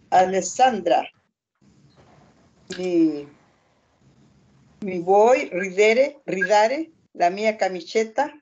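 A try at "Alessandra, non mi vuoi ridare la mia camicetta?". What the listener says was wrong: Occhio che non abbiamo una non abbiamo una virgola, non è Alessandra, pausa, e non dice mi vuoi, dice non. È una frase unica, allora stiamo parlando di lei. Stiamo parlando di Alessandra, non sto parlando io tu, Alessandra.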